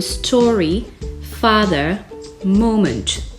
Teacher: On accentue sur la première syllabe les noms communs comme story, father, moment.